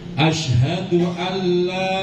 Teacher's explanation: Hati-hati jangan didengungkan. Kadang-kadang kan dibaca dengung.